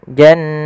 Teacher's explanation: Maka aljan jan sambil ditahan suaranya dua harakat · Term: ghunah